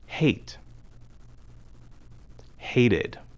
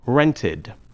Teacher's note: we pronounce the e d ending as an extra syllable id when the base form of the verb ends with the sound